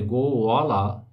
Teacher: এই অন্তস্থ বয়ের উচ্চারণ ও, তাই একে ও শ্রুতি মানে অন্তস্থ ব শ্রুতি বলা যায়